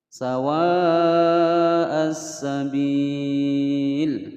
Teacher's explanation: alif lamnya lebur karena hukum bacaan al-syamsiyah